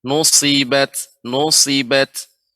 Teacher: Sadnya lebih ditampakkan ibu karena sifat sad adalah sofir